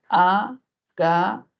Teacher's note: Luego tenemos la palabra hágaselo, hágaselo, si realizamos silabeo sería hágaselo. Mayor fuerza de voz al inicio, y tendríamos una palabra sobre esdrújula.